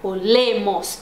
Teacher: não é no o que tá a sílaba tônica, é no le